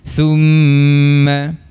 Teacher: Makhraj huruf mim di bahagian bibir yang perlu kita rapatkan kedua bibir kita.